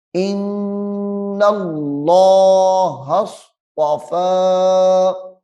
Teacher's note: اس میں جلالت اللہ کا لام موٹا ہو رہا ہے، اور اس میں جلالت اللہ کے لام کی جو ہا ہے وہ صاد کے ساتھ مل رہی ہے۔